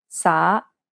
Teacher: after Teddy see the second tone is a rising tone SA it has a rising intonation and kind of sounds like you're asking a question